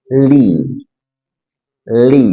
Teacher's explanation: Ada huruf lam dari 2 sisi lidah hingga ke akhir ujungnya bertemu dengan gusi atas di hadapannya.